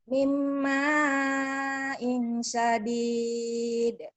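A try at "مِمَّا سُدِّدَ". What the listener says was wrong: Mimma sodid ya, bukan sadid. Mimma sodid. Mimma sodid.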